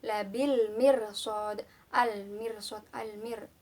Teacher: Setelah itu ada hukum bacaan al-qamariyah, yaitu alif lam bertemu dengan mim. Jadi cara bacanya harus jelas.